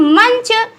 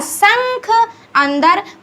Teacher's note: अनुस्वार का उच्चारण नासिक से होता है